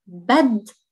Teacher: it's a double d, because the dal in Arabic is geminated, so baddi, not baddi, baddi, so we're doubling the letter, and you can actually see the gemination sign in Arabic over here, so baddi.